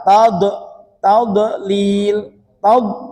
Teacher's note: pada kalimat tadlil jangan sampai ada qalqalah tad tadlil tad begitu saja tad ditahan [berdehem] saja lil Ya, jangan sampai seperti diqqalqalahkan ini keliru ya.